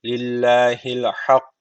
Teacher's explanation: Allah lafzı burada ince okunacak. Çünkü öncesik harfi kullan.